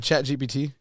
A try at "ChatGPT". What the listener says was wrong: Are you saying GBT or GPT? I'm hearing GB.